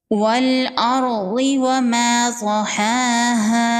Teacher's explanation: را ساکن سے پہلے زبر ہے، را ساکن کو پر پڑھیں گے